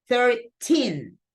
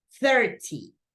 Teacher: Bad thing is that these ones right here, the one that have this ending, T-E-E-N, 13, 14, 15, 16, 17, 18, and 19, the stressed syllable goes in the teen, in the last syllable